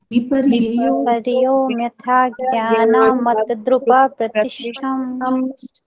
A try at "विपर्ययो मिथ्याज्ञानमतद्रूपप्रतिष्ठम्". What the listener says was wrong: बहुत सुंदर जिसने भी बोला।